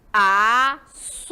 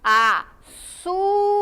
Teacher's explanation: a sílaba su é pronunciada com mais intensidade que a sílaba A e K. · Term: penúltima sílaba